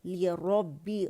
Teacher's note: ली लैम कसरा ली बारीकी से अदा करेंगे